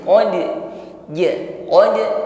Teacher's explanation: dalnya dipantulkan dengan ringan